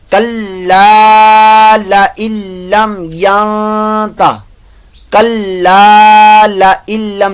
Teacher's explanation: ادغام ہی ہو رہا ہے لیکن ادغام بلا غنہ ہو رہا ہے یہاں پر, لہذا یہاں غننے والی کنڈیشن نہیں بنائیں گے.